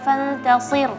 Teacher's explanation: Fantasir karena ra-nya tipis, jangan sampai shadnya ikut juga tipis ya. Ra-nya sudah bagus tipisnya, tapi jangan shadnya ikutan tipis.